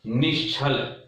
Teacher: ष्टुत्व संधि में हम तालव्य सकार करते हैं